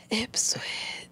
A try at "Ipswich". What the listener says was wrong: No, you said hip. You said Ipswich. You said Ipswich. Hip. Hip. Hip. You said hip.